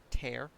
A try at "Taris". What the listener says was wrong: What does T-A-R spell? So it's tar. Tear would be T-A-R-E.